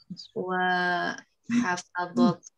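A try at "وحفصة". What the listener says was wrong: Ini bukan dot, ini shod. Wa hafsatu.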